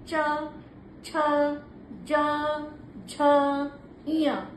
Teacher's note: आपका दोनों भाग जो है जीभ का वो तालु में जाकर स्पर्श करता है। तो इसीलिए इसको तालु तालव्य इसको संस्कृत में तालव्य वर्ण भी बोलते हैं।